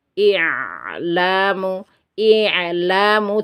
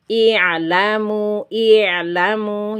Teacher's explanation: I'lamu ditipiskan itu caranya menipiskan adalah lisan kita harus kita datarkan seperti ini. Tidak boleh diangkat-angkat. Tidak boleh disentuhkan ke langit-langit bagian atas ya. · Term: sifat istifal